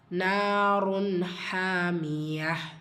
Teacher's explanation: ஹா சாக்கின்னு வரும்போது ஹம்சுடைய சட்டம் காற்றை வெளிப்படுத்தணும்.